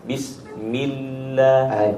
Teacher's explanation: اللام طويل، اللام ساكن مشدد طويل، والزمن المشدد أطول من زمن الساكن وأطول من زمن المتحرك. Huruf yang berharakat syiddah seperti di lafzul jalalah justru lebih panjang daripada huruf yang sukun, dan kemudian di bawahnya yang lebih singkat adalah huruf yang berharakat.